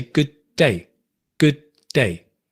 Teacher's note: No, we say good day, good day. We drop the D.